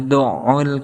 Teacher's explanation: makroj huruf Ain ini yaitu berada di tengah-tengah tenggorokan ataupun wasotol halqi · Di sini ada ain kemudian ditasdidkan, maka ada hentakan kepada huruf ain, makhraj huruf ain. Sedangkan makhraj huruf ain ini yaitu berada di tengah-tengah tenggorokan ataupun wasatul halki